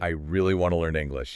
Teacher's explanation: the physical volume and pitch raise on the word really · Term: emphasis